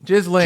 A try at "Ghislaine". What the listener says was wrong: I don't think there's a pause between the syllables.